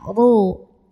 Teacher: Huruf ra dibunyikan secara tafkhim, karena ra-nya ini berbaris dhammah tanwin, barisnya di atas ya. Maka bacanya ditebalkan, pangkal lidah naikkan, ru.